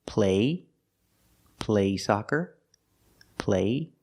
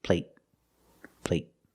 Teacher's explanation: the stop T at the end makes the long A a little shorter.